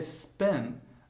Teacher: when I say spin, there is no puff of air